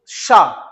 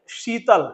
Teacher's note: जब हम इस शा का उच्चारण करेंगे तो हमारी जीभ तालु तक जाएगी लेकिन उस पर टकराएगी नहीं, वापस आ जाएगी। अब बोलिए शा, तो जीभ हमारी ऐसी बनेगी और जाएगी तालु तक, फिर वापस आ जाएगी। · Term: तालव्य